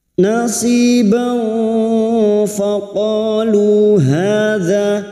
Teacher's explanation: kita semarkan bunyi Fath tanwin dan mendengung selama tiga harakat